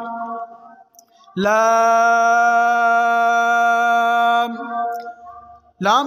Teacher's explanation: लाम को जबान का किनारा और दवाहक से सनाया तक के मसूड़ों से अदा करेंगे